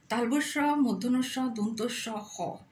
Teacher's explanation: এই বর্ণগুলিকে উচ্চারণ করার সময় নিঃশ্বাস বায়ুকে আংশিক বাধাপ্রাপ্ত করে শীষ ধ্বনির মতো প্রবাহিত করতে হয় বলে এদের উষ্ম বর্ণ বলা হয়